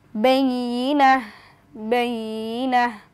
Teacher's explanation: যেহেতু গোলতার উপর ওয়াকফ করলে সাকিন হয়ে যায়, আমরা এখানে সাকিন করে পড়ব, অর্থাৎ এই পেশের জায়গায় আমরা একটা জজম দিয়ে দিব।